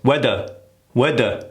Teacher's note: There's a hard TH that we tend to always miss because you need to stick the tongue out. And again, going back to the airflow has to come out.